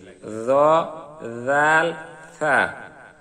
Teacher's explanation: এই 3টি হরফের উচ্চারণ নরম, জিহ্বার আগা সামনের উপরের 2 দাঁতের আগার সঙ্গে লাগিয়ে